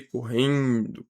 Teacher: Correndo, a gente tem o dígrafo RR, que na separação silábica ele é separado, e a gente tem o EN. EN nasalizando o E, correndo. Percebe que o som sai pelo nariz.